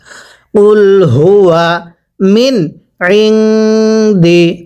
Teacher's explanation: কুল সবাই পড়ব কুল হুয়া এখানে হুয়া পড়লে শুদ্ধ হবে না এটা হাটা উচ্চারণের সময় গলার মাঝখান থেকে আওয়াজ করে পড়তে হবে